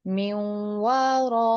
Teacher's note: یہاں پر یا مدہ ہے، یا اس کو بھی آپ اسٹریچ کریں گے